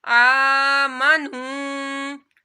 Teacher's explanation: حمزہ کے اوپر کھڑا مدہ ہے تو یہاں پر ایک الف کے برابر اس کو لمبا کرنا ہے